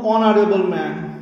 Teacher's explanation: আচ্ছা, যেমন ধরুন অনারেবল ম্যান, এইচ কিন্তু থাকা সত্ত্বেও কিন্তু এন হচ্ছে, তার কারণটা হচ্ছে এইচটা কিন্তু সাইলেন্ট থাকছে উচ্চারণটা